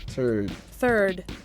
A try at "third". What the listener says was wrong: It still sounds like turd.